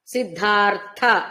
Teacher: సిద్ధార్థ అన్నప్పుడు అర్థలో ఉన్నది మహాప్రాణ తకారం